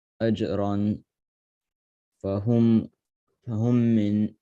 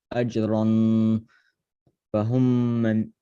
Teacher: Make it a ghunna from the nose and say stretch 1 second.